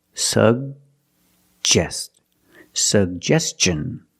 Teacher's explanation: The first G is a hard G sound, sug. And the second G is the J sound, like juice and jump.